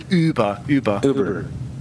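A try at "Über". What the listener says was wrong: No, you're going ooh, like a who's, like who's afraid of Big Bad Wolf.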